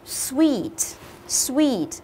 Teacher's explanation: không đi à a sweet sweet nhớ đừng đọc là Switch đừng có lên giọng mà chúng ta hãy xuống dần giọng của chúng ta với cái ngữ điệu của từ này